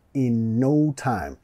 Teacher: Vamos a vincular los dos N's acá.